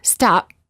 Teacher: when they say the letter P in the word stop the lips stay closed no air comes out this creates almost a silent version of the sound P or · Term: half P